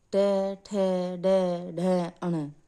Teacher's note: ट वर्ग तीसरा वर्ग होता है, ये मूर्धन्य मूर्धा से बोले जाते हैं, जैसे ट, ठ, ड, ढ, अण।